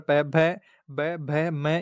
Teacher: ओष्ठ्य दोनों होठ मिलते हैं